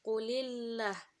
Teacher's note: Terdapat hukum bacaan tarkik, yaitu apabila huruf lam yang ada dalam perkataan Allah dan didahului oleh huruf berharokat kasrah, maka dibaca tipis.